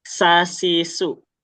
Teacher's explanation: dia bukan bukan seperti sa yang digigit bukan juga seperti syin ya yang menyebar. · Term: sin